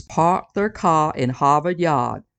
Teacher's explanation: there were new englanders that did more business with the UK drop kicked that R to the curb